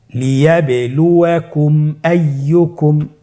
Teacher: মিম সাকিনকে স্পষ্ট করে গুণনা ছাড়া পড়তে হবে। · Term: ইজহারে শাফাউই